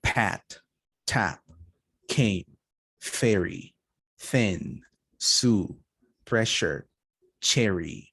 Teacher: with just consonants no vibration no vibration here no vibration either did you feel any vibration not really right that's why those are voiceless consonants